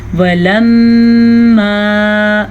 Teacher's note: پھر سے میم کا غنہ ادا کر لیں